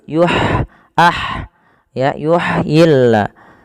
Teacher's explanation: Apa sifat huruf ha? Ha ada sifat hamesnya. Mengalirnya nafas. Dan ha ini tidak boleh dibaca yuhyillah.